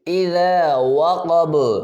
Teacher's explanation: اذا وقب، با پہ قلقلہ ہوگا، واو پہ حروف گول ہوں گے، ہونٹ گول ہوں گے، اور ذال کو نرمی سے ادا کریں گے